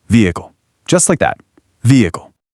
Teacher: native speakers just drop that H entirely. The vowels glide right into each other.